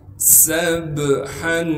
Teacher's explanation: سین کے بعد سین کو با سے ملائیں گے کیونکہ با ساکن ہے. با پر قلقلہ کیا جائے گا